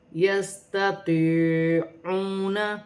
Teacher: یا ساکن سے پہلے زیر ہے تو یا مدہ بن رہی ہے، واو ساکن سے پہلے پیش ہے تو واو مدہ بن رہی ہے۔ ان دونوں کو ایک ایک الف کی مقدار کھینچ کر پڑھا جائے گا